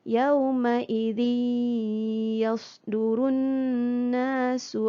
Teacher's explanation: Bunyi tanwin masuk di dalam ya. Dengan dengung. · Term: idgham ma'al gunnah